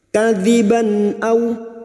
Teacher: namanya bacaan idhar halki, dibaca jelas tanpa mendengung